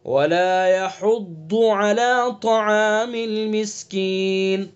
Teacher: طا کو پر کر کے پڑھیں گے. طا بھی حروف مستعلیہ میں سے ہے اور ضاد بھی حروف مستعلیہ میں سے ہے.